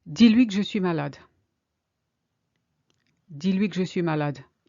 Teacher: You see how you hardly hear the que.